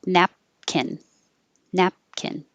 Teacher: So close your lips for the P, but don't release it.